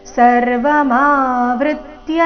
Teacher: ಸರ್ವಮಾವೃತ್ಯ ವೃ ಮೇಲೆ ಆಘಾತ